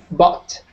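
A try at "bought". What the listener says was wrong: Bot. Good.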